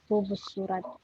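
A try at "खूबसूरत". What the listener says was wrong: Nah, hub surat. Ya, jadi bacanya hub surat. Kalau dalam kata ini b-nya nggak e-nya tuh hilang, jadi langsung dibaca hub surat. Emang pas kita baca memang tidak ada e-nya itu, hilang e-nya.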